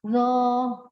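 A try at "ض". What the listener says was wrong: Bukan do. Huruf dod. Makhrajnya sisi lidah ada di sisi geraham, di geraham atas kiri ya. Kalau sisi lidah kiri ada di geraham atas kiri ya. Jadi ujung lidahnya tidak keluar, ujung lidahnya tidak keluar.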